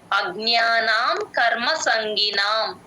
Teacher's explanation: జి N వై ఏ జ్ఞ అలా య య తో ఎండేటట్టు చూసుకోండి అజ్ఞానాం న కి దీర్ఘం యూజువల్ గా ఇక్కడ కట్ చేస్తారు